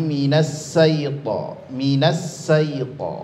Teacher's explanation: kesalahan umum sekali sering sekali terjadi dalam pengucapan atau kesalahan pada huruf syin yaitu tertukar menjadi huruf huruf Sin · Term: tertukar menjadi huruf Sin